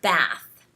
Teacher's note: the word bath uses this short a sound and that's very American